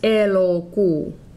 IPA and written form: e.lo.kuː (elokuu)